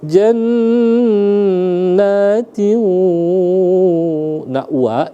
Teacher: itu dia khayshum, masuk ke hidung dia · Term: idgham bi gunnah